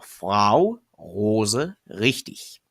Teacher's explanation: Now those are examples of when the R is voiced.